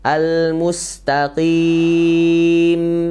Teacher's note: dalam keadaan sukun mim sukun itu ada mengalir suara sedikit